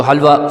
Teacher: ایک ہا جو ہے وہ حلق سے نکالیں گے